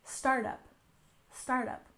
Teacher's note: startup with stress on the first syllable, startup, startup.